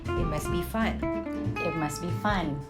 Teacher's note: you can just simply drop the T sound